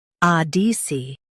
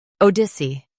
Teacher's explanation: Stress ah in US, ode in UK.